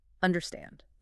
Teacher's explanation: The main stress must fall on the last syllable.